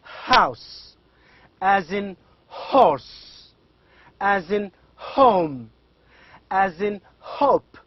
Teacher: produced without the active use of the tongue and other parts of the mouth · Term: glottal sound